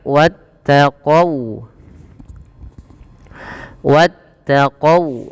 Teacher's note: Jangan dibaca wattaqau qau dengan o tapi dia dengan u ya karena dia sifat wau wa Wu maka wattaqau wattaqau kemudian